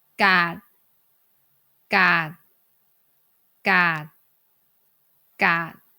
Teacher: we do not release the air at the end of the word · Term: final consonant sound